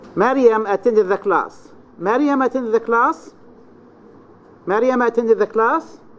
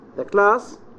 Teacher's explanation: So you raise your voice on class. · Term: high rise